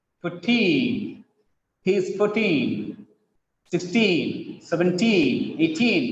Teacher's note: The teen words always have stress on the last syllable.